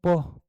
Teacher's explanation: તો પ બોલતી વખત શું થાય છે હોઠ હોઠ છે એ ભેગા થાય છે ઉષ્ઠ વ્યંજનમાં આવે આપણો જવાબ ઉષ્ઠ વ્યંજન થશે ઉષ્ઠ વ્યંજનમાં બીજા